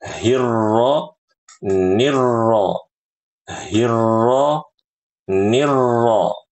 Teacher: Jadi langsung masuk ya, Ibu ke rnya. Jangan memanjang.